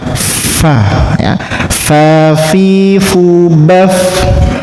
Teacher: Fa itu bibir bawah bagian dalam ini menyentuh gigi seri bagian atas.